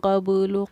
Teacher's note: آواز کا لوٹنا ہی ہمارا قلقلہ کرنا کہلاتا ہے. قبلو کی با ساکن پر آواز لوٹے گی، حق کے قاف پر ہماری آواز لوٹے گی